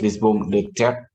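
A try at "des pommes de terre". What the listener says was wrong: pommes de terre. Non, des. Non, des. You don't pronounce the S. Des. Terre. Non, terre. Terre. Terre.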